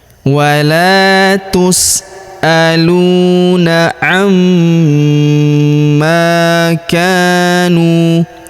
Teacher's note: Huruf ma kita tahan dan kita tekan serta kita dengungkan dua sampai 3 harakat karena terdapat tanda tasdid di atasnya.